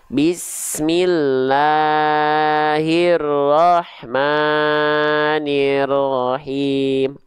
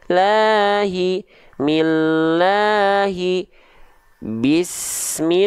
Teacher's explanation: 2 harokat saja, jangan sampai berjuta-juta harokat.